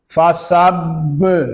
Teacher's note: با مشدد ہے، اس کو جماؤ کے ساتھ ادا کریں گے پھر کلکلا ہوگا.